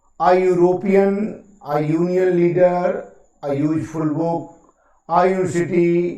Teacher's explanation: यहाँ आप देख रहे हैं कि यूरोपियन का पहला लेटर जो है ई है, लेकिन ये वावल साउंड ना होकर के या का उच्चारण दे रहा है, अर्थात कॉन्सोनेंट का उच्चारण दे रहा है।